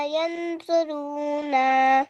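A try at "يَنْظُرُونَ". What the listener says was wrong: यंजुरूना। जरू नहीं है, जुरूना। जरू नहीं, यंजुरू। जरू क्यों, जौ के ऊपर पेश है ना, यंजू।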